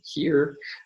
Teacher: we can find that glottal fricative in English at the beginning of a word as in here